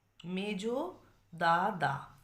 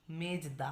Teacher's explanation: সম অক্ষর ছিল দা দা সেই সম অক্ষরের মধ্যে একটা অক্ষর দেখো এখানে লোপ পেয়েছে